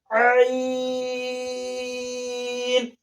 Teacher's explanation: ये जो है हल्क के दरमियान वाले हिस्से से अदा होगा और 5 उंगली खींचा जाएगा पढ़ने में।